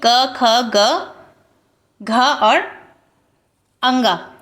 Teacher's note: क वर्ग के जितने भी आपके वर्ण होते हैं वो सभी आपके कंठ वर्ण के अंतर्गत आएंगे